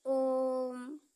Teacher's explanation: और प्लुत, जैसे किसी को जब बुलाया जाता है तो उस समय अधिक समय तक ऐसे जो है आवाज निकालते रहते हैं, जैसे कहा जाता है ओम। तो ओम कहते समय आवाज अधिक देर तक निकालना पड़ता है, तो यही प्लुत है।